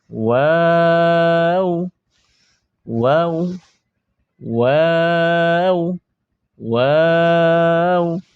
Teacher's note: ওয়াও বলার সময় প্রথমে গোল করবেন, পরে আবার স্বাভাবিক করবেন, পরে আবার গোল করবেন